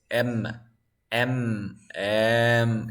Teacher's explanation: You feel a vibration. So this is voice.